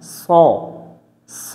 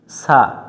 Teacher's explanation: সদ অক্ষর সামনের নিচের দাঁতের আগা থেকে শীর্ষসহ মোটা করে পড়তে হয়।